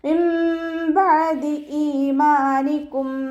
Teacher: നൂൻ സാക്കിനയെ മീമാക്കി മാറ്റി മറിച്ചിട്ട് ഉണ്ണയോടുകൂടി ഓതി കൊടുക്കുക കേട്ടോ. നൂനിൻ്റെ സൗണ്ടിനെ മീമാക്കി മാറ്റി മറിക്കും ചെയ്യുക, ഉണ്ണ കൊടുക്കും ചെയ്യുക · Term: ഇഖ്ലാബ്